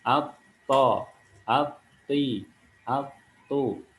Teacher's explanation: ketika kita sukunkan misalkan at, to, itu ujung lidah kita menempel pada gigi seri bagian atas, bagian pangkalnya.